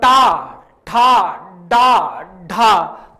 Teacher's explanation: हमारी जीभ का जो अगला भाग है वो थोड़ा सा मुड़ता है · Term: मूर्धन्य